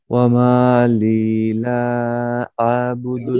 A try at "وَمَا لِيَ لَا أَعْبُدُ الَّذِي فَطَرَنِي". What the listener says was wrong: লিলা না, লিয়ালা, লিয়ালা।